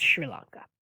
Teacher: it is said with an sh sound and i know there is no h there but in this part of the world sr is said sort